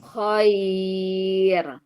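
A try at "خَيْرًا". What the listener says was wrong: Bukan khair. Kan ada mad iwad. Iya, khaira.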